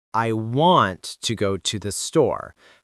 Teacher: I want to go to the store has stress on want, go, and store. Not every word equally.